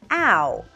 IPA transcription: æʊ